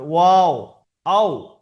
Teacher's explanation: দুই ঠোঁট অসম্পূর্ণ মিলিয়ে মাঝখান থেকে উচ্চারণ হয়ে যাবে, মানে সম্পূর্ণ মিলবে না, অসম্পূর্ণ মিলে উচ্চারণ হবে, ওয়াও, আও।